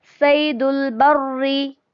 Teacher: यहाँ पर शद्दा भी है तो रॉ को 2 बार पढ़ेंगे, और जेर है तो बारीक ही पढ़ा जाएगा।